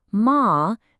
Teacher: the first tone e shung is all about that high steady sound. Find a comfortable high spot in your voice and just hold it. · Find a comfortable high spot in your voice and just hold it. It should sound clear and totally level. And this brings us to our very first word, that high flat sound.